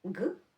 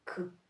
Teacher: хороший дзвінкий ґ стане к без голосу ґ к. Знов таки, якщо хочеться правильно вимовляти ґ, скажіть к зі звуком ґ к.